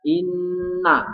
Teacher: Inna dengung ya, disebut hukum bacaan gunnah ya.